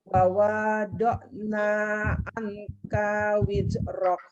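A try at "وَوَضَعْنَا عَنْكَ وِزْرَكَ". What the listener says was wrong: Wawadokna wa-nya itu pendek semua.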